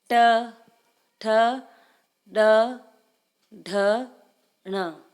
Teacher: ट वर्ग में जीभ और दंतुओं का प्रयोग करते हैं।